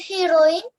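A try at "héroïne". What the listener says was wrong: Not heroine, heroine. H will be silent. When H comes at the beginning of a word, H will be silent.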